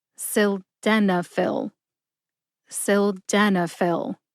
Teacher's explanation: emphasize Den see if you can hear the emphasis when I say it slowly